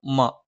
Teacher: രണ്ടു ചുണ്ടും തുല്യമായി അടച്ചുവെക്കണം